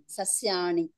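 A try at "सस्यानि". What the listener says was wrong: అది సస్యాణి కాదు, సస్యాన్ని.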